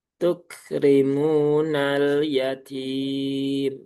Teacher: Lam sukunnya tipis, ya-nya tipis, tak-nya tipis, mimnya pun juga tipis.